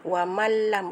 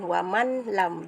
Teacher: Huruf lam tu dimasukkan ke dalam huruf nun. Jadi wamal lam, bukan waman lam. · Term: idgham bila gunnah